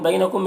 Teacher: मीम में इज़हार शफ़ा भी हो रहा है